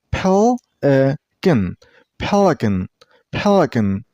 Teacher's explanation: And while you pronounce the word, stress on the first syllable.